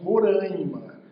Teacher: Observem que a letra M não está imediatamente ao lado da letra A, mas muitos brasileiros pronunciam Roraima, por conta dessa proximidade nasalizando A